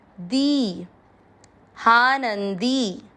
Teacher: न के साथ आधा नन, दी की मात्रा बड़ी, लंबा खींचना है।